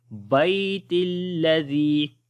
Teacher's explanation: جب یہاں پر ملا کر پڑھیں گے تو تا کو لام کے ساتھ پڑھیں گے